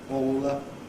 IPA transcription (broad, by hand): ˈɔːw wə